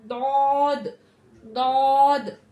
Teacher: दौद हमारा हरूफ मुस्तालिया, ये हमेशा मोटा पढ़ा जाता है और सबसे मोटा पढ़ा जाता है। ठीक है, मुंह भर के सबसे मोटा पढ़ा जाता है।